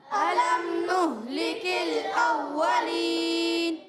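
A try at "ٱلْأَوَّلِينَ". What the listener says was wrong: آپ نے آپ جو پڑھے نا اوّا نہیں پڑھنا، اوّا پڑھنا، ہونٹ گول کریں گے، صحیح ہے؟ اوّا یعنی آپ فا کے مخرج سے واو نہیں پڑھیں گے. اولین. گڈ، ہونٹوں پہ زور دینا ہے، ہونٹ گول کرنے. الم نہلک الاولین.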